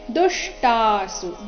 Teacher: ದುಷ್ಟಾಸು ದು ಮೇಲೆ ಆಘಾತ.